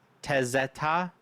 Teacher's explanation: I'm putting the emphasis on the ta at the end.